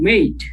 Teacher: In British accent we say with a diphthong, mate.